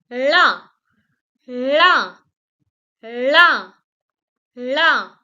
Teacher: La is a very special sound that is also called a retroflex sound because it is obtained by curling your tongue. Once you will curl your tongue and you will roll it out, then this La sound will be produced.